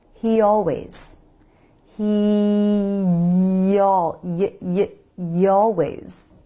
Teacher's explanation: the y is a glide consonant so we can use it to smoothly glide between words